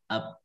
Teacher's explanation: Ba itu ada syiddahnya, ada jaharnya.